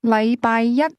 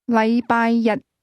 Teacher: The difference is that the word one used with Monday is pronounced with a high level tone, while the word day is pronounced with a low level tone